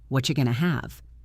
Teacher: The what are became whatcha and the going to became gonna.